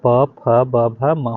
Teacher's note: दोनों ओष्ठों से आपका प फ ब भ म हो गया